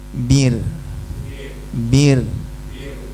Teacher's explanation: kalau jatuh setelah kasrah dibaca tipis hukum asalnya